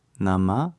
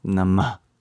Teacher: at the end of Nama is actually a visarga, which forces the air out. So it's not Nama, it's Nama.